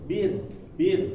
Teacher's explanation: Nah, dia jadi menukik ke atas, lidahnya dari bawah menukik ke atas. Kalau misalnya tarkik atau tipis, bir, tanpa ada bagian belakangnya ini naik